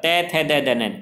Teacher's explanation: तय थ की जब ध्वनि आती है तो हमारी जीवा दांतों से टकराती है